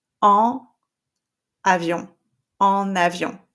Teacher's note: So I call it the drop jaw nasal sound.